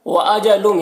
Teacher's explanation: یہاں پر تنوین کے بعد میم ہے، حروف یومن میں سے، تو ادغام ناقص ہوگا، تنوین کو میم سے ملا کر غنہ کے ساتھ پڑھیں گے۔